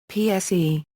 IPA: psː